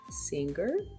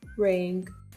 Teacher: To make the sound, place the back part of your tongue against the soft squishy part of the roof of your mouth. The tip of your tongue should stay low in your mouth. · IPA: /ŋ/